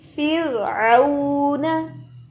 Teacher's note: रॉ साकिन है और फा के नीचे जेर है, तो आप पढ़ेंगे फिर मोटा नहीं करेंगे बल्कि फिर आऊना। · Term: रॉ साकिन मा कबल कसरा